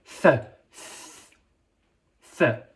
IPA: θ